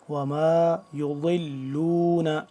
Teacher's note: ضاد کو جو ہے زبان کی بائیں کروٹ اوپر والی جو داڑھ ہیں ان کے ساتھ ٹچ کریں گے